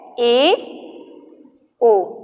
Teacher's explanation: जिन स्वरों के उच्चारण में मुख द्वार आधा बंद रहता है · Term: अर्ध समवृत्त स्वर